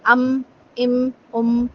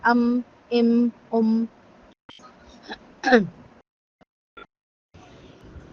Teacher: अम इम उम में आप महसूस करें आपकी नाक के अंदर आपको एक आवाज एक वाइब्रेशन फील होगी वो गुने की आवाज होती है उन्ना होता है अम इम